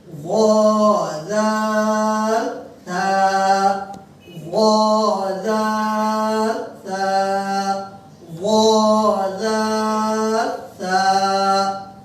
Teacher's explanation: এই তিনটি হরফ জিহ্বার আগা উপরের দাঁতের আগা